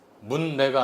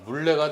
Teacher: 니은이 리을을 만나서 리을로 바뀐 겁니다